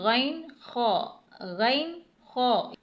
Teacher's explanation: غین خا کی ادائیگی ہم حلق کے اس حصے سے کرتے ہیں کہ جو منہ کی جانب ہے